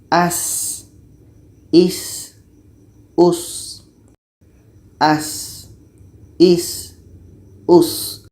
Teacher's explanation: Sin ini letaknya pada ujung lidah menempel dengan bagian atas gigi seri bawah. · Kalau sin ini kita terbiasa mengalirkan anginnya. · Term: hamas